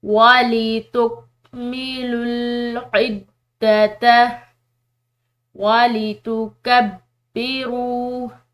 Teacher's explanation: وَلِتُکْمِلُوا الْعِدَّةَ وَلِتُکَبِّرُوا، با جو ہے یہ مشدد ہے، یعنی کہ اس کو پریشر کے ساتھ پڑھا جائے گا